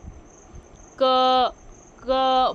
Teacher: है ठीक है क वर्ग का उच्चारण स्थान क्या है कंठ क क बोल के देखिए आपको ऐसा लगेगा जैसे गले से आवाज आ रही है